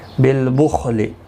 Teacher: خا حروف مستعلیہ ہے، پر پڑھا جائے گا، اس کو ہلانا نہیں.